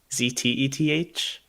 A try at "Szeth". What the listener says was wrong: Not quite. It's close. You're just missing one letter. It just starts with an S. So it's Szeth.